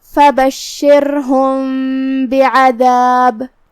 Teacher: شین کو ہم زبان اور اوپر کے تالو کے درمیان سے ادا کریں گے، جو کہ را پہ جزم ہے تو یہاں را کا حکم ہے ترقیق، مطلب ہم اس کو ہلکی آواز سے پڑھیں گے کیونکہ اس سے پہلے والے حرف پہ مطلب شین کے نیچے زیر ہے. · اخفاء کا معنی ہے چھپا دینا، تو ہم یہاں میم کو چھپاتے ہوئے لیکن غنہ کے ساتھ یہ حکم کو ادا کریں گے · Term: اخفاء شفوی